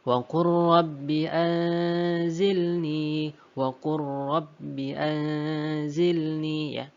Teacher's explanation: Jadi lam sukunnya tidak kita baca, langsung kita masukkan ke huruf ro-nya. Wa qur rabbi, seperti itu. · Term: idgham mutaqaribain, idgham mutaqariban